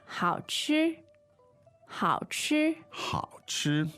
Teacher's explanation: So the tones there on 好 吃 are Third and first. third and first.